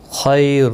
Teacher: خیر، دو پیش کی وجہ سے پر پڑھا جائے گا، خا حروف مستعلیہ ہے، پر پڑھا جائے گا۔ خی یا لین بھی ہے، تھوڑا نرمی کے ساتھ کھینچ کر ادا کریں گے۔